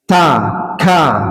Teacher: Fahathahu syahsun sakata. Jadi bacanya dia itu ada udara yang mengalir, itu huruf kaf. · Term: sifat hams